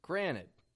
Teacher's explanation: we make the T in the middle disappear with the word Granite